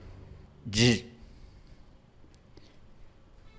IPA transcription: ʝ